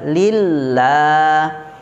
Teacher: Lillah tipis. Sedangkan lam yang kedua itu terdapat hukum mad tabi'i, la panjang selama 2 harokat, tidak boleh lebih